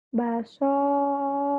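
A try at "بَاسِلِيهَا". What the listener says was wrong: Pendek. Pendek soalnya. Ini kan nggak ada alif. Ini lam.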